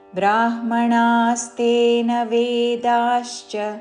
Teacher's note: బ్రా దీర్ఘముతో పలికి బ్రాహ్మణాస్తేన రాణిలో పలికే ణా దీర్ఘముతో దాని మీద ఆఘాత.